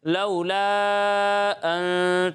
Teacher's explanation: یہاں مد منفصل ہے تو اسے 2 یا پھر 2.5 الف کے برابر کھینچیں گے